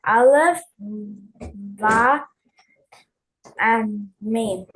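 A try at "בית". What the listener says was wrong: So out of habit, you're saying ba, and that's correct, but it originally was pronounced as bait. Can you say bait?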